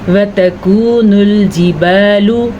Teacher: کاف کے بعد واو ساکن ہے تو یہ واو مدہ ہے، اس کو ہم کھینچ کے پڑھیں گے۔ وَتَكُونُ نہیں پڑھیں گے کیونکہ واو زبر و تا زبر تا اتنا ہی لمبا کریں گے۔